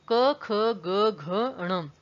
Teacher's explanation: जो क वर्ग होता है उसका उच्चारण स्थान कंठ्य होता है, गला